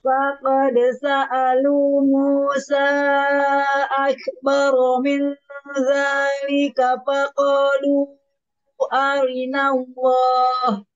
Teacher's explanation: Di Musa, di situ ada mat ketemu Hamzah.